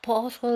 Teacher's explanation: we have the dark la because it is in final position and it sounds like an o or like an u